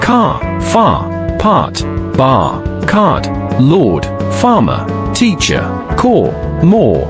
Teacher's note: La différence principale c'est que la lettre R chez les Britanniques ne se prononce pas quand elle suit une voyelle tandis qu'elle est toujours prononcée chez les Américains quelle que soit sa place dans un mot. La lettre R britannique, si elle n'est pas au début d'une phrase ou fait partie d'un groupe de consonnes, elle ne se prononce pas mais plutôt permet de tirer la voyelle précédente à la lettre.